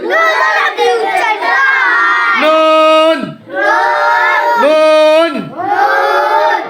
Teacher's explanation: জিব্বার আগা তার বরাবর উপরে তালুর সঙ্গে লাগিয়ে নুন হরফটি উচ্চারিত হয় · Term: 9 নম্বর মাখরাজ